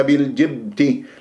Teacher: الباء مقلقل قلقله صغرى في وسط الكلام